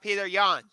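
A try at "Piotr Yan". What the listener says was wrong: Piotr Jan, yeah. It's pronounced Piotr, not Peter.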